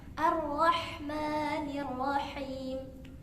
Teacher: hasukun juga memiliki sifat rokhwa. Jadi dialirkan suaranya.